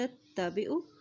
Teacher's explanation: نون کی زبر کو تا کے ساتھ ملائیں کیونکہ تا کے پر شد ہے۔